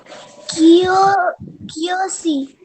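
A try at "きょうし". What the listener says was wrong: हाँ, क्योशी, करेक्ट.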